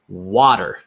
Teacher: importantly, that T does not sound like a T. It sounds like a D.